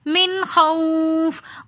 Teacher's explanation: وآمنہم من، پھر خوف کے اندر واو ساکن اور اس سے پہلے زبر ہے، تو واولین ہونے کی وجہ سے یہاں پر ہم جلدی سے پڑھیں گے اور اس واو کو ہم نے بالکل بھی نہیں کھینچنا۔ من خوف، واو کو ہم نے بالکل بھی نہیں کھینچا۔